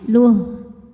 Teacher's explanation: Faqad habita amaluh, nah ini ha walaupun barisnya panjang, kalau berhenti jadi ha sukun, pendek lamnya